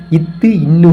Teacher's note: மேல்வாய் பல்லின் அடி நாக்கின் நுனி பொருந்துவதால் தோன்றும்